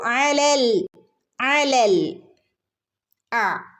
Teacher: ഐന് തൊണ്ടയുടെ നടുക്ക് നിന്ന് വരുന്ന ലെറ്റർ ആണ്